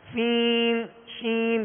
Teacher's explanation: سین شین کی جو مد ہے نا اس کی آواز ناک کی طرف لوٹ جاتی ہے